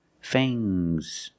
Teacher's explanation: it's the two teeth the two sharp teeth are called fangs use a long a plus the nasal sound and a soft G fangs